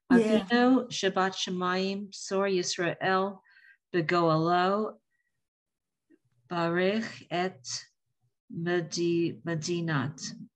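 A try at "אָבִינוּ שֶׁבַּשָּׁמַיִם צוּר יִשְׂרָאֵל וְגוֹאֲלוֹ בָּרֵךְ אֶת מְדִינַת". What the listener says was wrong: Perfect. Thank you.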